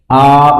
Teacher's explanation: আর জিহ্বার অবস্থানটা একেবারেই নিচে থাকে হচ্ছে আ উচ্চারণ করতে গেলে জিহ্বার অবস্থানটা একদম নিচে থাকে